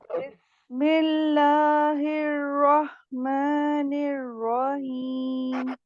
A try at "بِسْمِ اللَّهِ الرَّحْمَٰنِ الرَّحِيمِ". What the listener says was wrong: ٹھیک ہے، بسم اللہ ہیر، ایسے آپ نے ہاں کو لمبا نہیں کرنا، دوبارہ پڑھیے. رحیم.